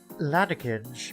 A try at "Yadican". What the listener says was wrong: Is it it's not an L, it's an I. It's an I, not an L.